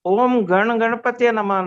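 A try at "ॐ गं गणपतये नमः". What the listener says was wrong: Om Gana Ganpate. Gana, but if on Ga you are giving the Anuswar, then it will be Gan. Yeah, on Ga it will actually be Gang, Anga sound, because the next letter Ganapate starts with Ga. So Ga comes in the Ka group.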